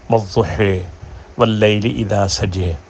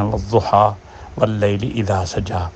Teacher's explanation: زبر کو بھی جس طرح وہ یا کو بدلتے ہیں، یعنی یا کو الف اور یا کی درمیانی آواز میں پڑھتے ہیں، اسی طرح زبر کو زیر اور زبر کی درمیانی آواز میں پڑھتے ہیں